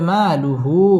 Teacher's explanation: মা মধ্যে তাবাঈ এক আলিফ টেনে পড়তে হবে